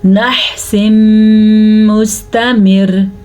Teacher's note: نحس مستمر، وقف کی وجہ سے را ساکن ہو گئی، را ساکن ہو گئی تو پیچھے والے حرف کے نیچے زیر ہے تو را باریک پڑی جائے گی، بلکہ اگر وقف کریں یا نہ کریں دونوں صورتوں میں را باریک پڑی جائے گی.